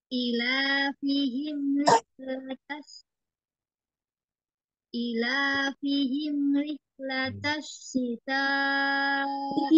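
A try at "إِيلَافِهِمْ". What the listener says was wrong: Ila, I-nya panjang, I itu panjang, panjang. I panjang, Ila, la,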